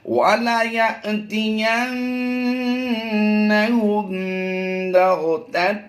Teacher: میم ساکن کے بعد حرف با آ گیا تو یہاں پر اخفاء شفوی کرتے ہوئے ہم نے غنہ کی آواز دینی ہے.